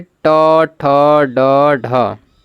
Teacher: यहां पर देखिए ट ठ ड ढ यानी कि तीसरा है जो कि मुर्धन्य व्यंजन यह मुर्धा से उच्चारित होता है